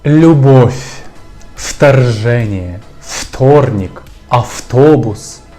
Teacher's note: в перед приголосними та в кінці слова уподібнюються до літери ф все через те що ці два звуки схожі бо вони щілинні